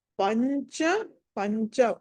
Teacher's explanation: పంచ ప తర్వాత అనుస్వారం తర్వాత చ ఉంది కాబట్టి అది పంచ అని పలకాలి, పంచమాక్షరం పలకాలి.